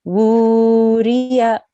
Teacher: So this is wu, but it's 2 seconds because of the inverted dhamma.